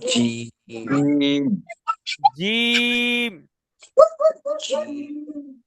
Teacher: শক্ত করে পড়ার একটা সুন্দর নমুনা হচ্ছে, আমাদের বাতাসটা বের হবে না, মুখ থেকে বাতাসটা বের হবে না।